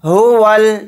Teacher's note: یہ الف نہیں پڑھا جائے گا، واو کو ڈائریکٹ لام کے ساتھ ملا کر پڑھیں گے۔